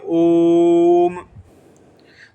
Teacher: थोड़ा देर तक बोल दिया तो उसमें 3 मात्रा का समय लग गया। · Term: प्लुत स्वर